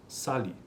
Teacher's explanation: inferimos Que tal palavra é oxítona e pronunciamos Sali